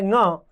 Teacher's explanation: कवर्ग का जो अंतिम वर्ण है ङ, यह एक तो कंठ से बोला जा रहा है क्योंकि कवर्ग का वर्ण है, और उसके साथ साथ नासिका से भी बोला जा रहा है, तो इसका उच्चारण स्थान कंठ और नासिका दोनों हो जाएंगे।